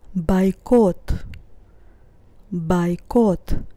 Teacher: the first o is not stressed that's why i pronounce it as a and the second o is stressed